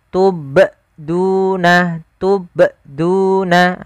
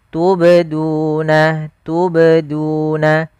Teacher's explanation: Yang tepat adalah dia huruf qalqalahnya memantul sambil mengalir. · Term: qalqalah sughra